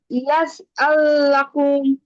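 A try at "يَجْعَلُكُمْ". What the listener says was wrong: ইয়াজে আপু জিমের মধ্যে কলকলা হবে। ইয়াজে জিম কলকলা, ইয়াজে আল্লাকুম, ইয়াজে আল্লাকুম, ইয়াজে ইয়াজে ইয়াজে আল্লাকুম, ইয়াজে আল্লাকুম।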